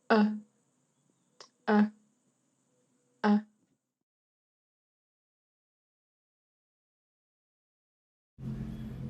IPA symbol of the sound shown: ʌ